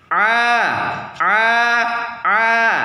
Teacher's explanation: posisi lidah tidak naik ke langit-langit atau istigfal Nah posisi lidah enggak naik ya perhatikan lidah Saya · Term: huruf halqi